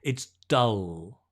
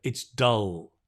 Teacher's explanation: the tongue just rests relaxed on the teeth so you get that dark L